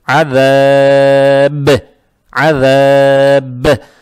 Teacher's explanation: Это «мад арид» будет, а «ба» надо будет подчеркивать, так как появляется сукун и будет «калкала». То есть надо читать «азаб», «азаб».